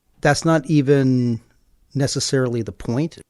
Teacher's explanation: And like I mentioned before, in every thought group, there's going to be one word that's stressed. So for me, the stresses are even in the first thought group and then point in the second one